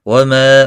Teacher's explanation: ما الف مدہ ہے، ایک الف کے برابر کھینچ کر پڑھیں گے۔